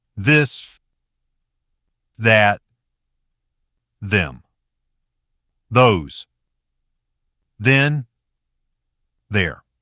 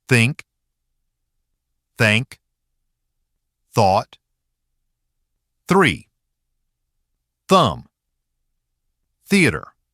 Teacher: Duh is voiced. Th is voiceless. Same position, the only difference is the vibration in the throat. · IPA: /ð/ ; – /θ/